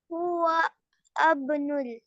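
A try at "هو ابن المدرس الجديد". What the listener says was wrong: واو کو با کے ساتھ ملیں گی. حمزۃ الوصل ہے نا اس کو ہم نہیں پڑھیں گے. ہوا بنول.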